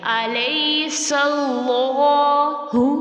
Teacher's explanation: اس کو تھوڑا سا کھینچیں گے کھڑا زبر کی وجہ سے 2 کاؤنٹس کھینچیں گے